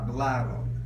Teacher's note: the rule is if the word ends in S and/or evolve the emphasis falls on the second to the last syllable